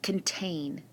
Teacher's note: the syllable with a long a sound is in the accented syllable